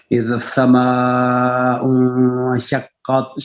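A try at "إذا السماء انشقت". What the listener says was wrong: سین کے اوپر نا وزن ڈالیں. اذا السماء انشقت وأذنت لربها وحقت.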